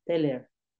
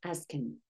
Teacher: the H and TH sounds are cut off at the beginning of the object pronouns